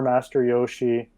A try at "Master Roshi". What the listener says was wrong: So it's Master Roshi with an R.